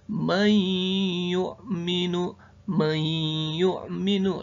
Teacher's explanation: idgham biguna, huruf nun sukun bertemu huruf ya.